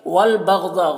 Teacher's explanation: गैन को पुर पढ़ेंगे, ज़ौद को भी पुर पढ़ेंगे